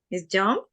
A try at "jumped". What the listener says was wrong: No. Remember the ed. ¿Cuál es el sonido que me toma en este caso? Jumped. Jumped. Like help. Helped. Like stop. Stopped.